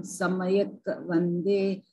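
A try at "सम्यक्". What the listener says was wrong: Samyak. It's half.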